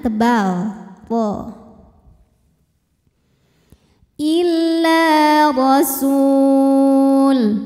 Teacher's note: Illa rasul, huruf ra dibunyikan secara tafkhim karena ra berharokat di atas yaitu harokatnya fathah, maka ra dibunyikan dengan tebal, ra. Illa rasul.